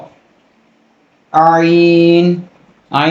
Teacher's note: عین جو ہے گلے کے نچلے والے حصے سے ادا ہوگا